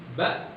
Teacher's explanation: Kemudian syiddah, sifat kuat. Ya, ketika huruf itu dilafalkan, makhrajnya tertutup sehingga tidak ada durasi suara yang keluar.